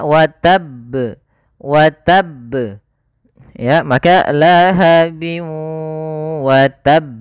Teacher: kita tekan dulu huruf ba-nya baru dimatikan di huruf ba-nya. Watab ya, watab, watab ya, maka lahabi watab. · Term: qalqalah